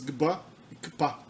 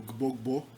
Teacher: Elas contam como uma consoante só, valem como consoantes biarticuladas e são muito comuns no começo da palavra.